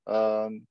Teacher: It's an original sukoon, it doesn't disappear. So I stretch this alif for six harakat.